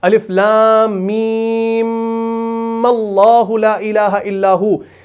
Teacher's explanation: जब आप वसल करते हैं तो आप इस मीम को इस तरीके से पढ़ते हैं कि दोनों मीम को मुशद्द बना देते हैं।